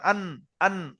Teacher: নুনের মাখরাজটা একদম সরল, জিভের আগা সোজাসুজি ওপরের তালুতে লাগবে